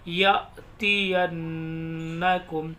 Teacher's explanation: जब भी नून पर तशदीद आती है गुन्ना करते हैं